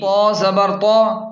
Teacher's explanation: طا کو خوب موٹا پڑھیں